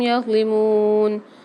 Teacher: میم کے ساتھ واو مد آ رہی ہے، اس کو بھی ایک الف مدار کھینچ کے پڑھیں گے